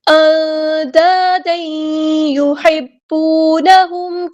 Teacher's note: بعد کو چھپانا، ایک کرتے ہوئے الف کے برابر رکنا ہے، تنوین کے بعد آئی یا، یہاں پہ ادغام مع الغنہ ہو رہا ہے ، اندادن نہیں پڑھنا، دین، اندا، یہاں پہ الف مد ہے